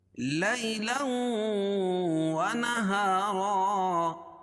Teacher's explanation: لیلا ونہارا، می یا مدہ، یالین، کیوں؟ اس لیے کہ یا ساکن سے پہلے زبر ہو تو یالین ہوتا ہے، اس کو نرم آواز کے ساتھ جلدی ادا کریں گے۔ لیلا ونہارا، لوں یا ادغام مع الغنہ ہوگا۔